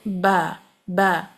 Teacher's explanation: बा के लिए जो होठों का तर हिस्सा है वेट पार्ट है वहां से ब अदा होगा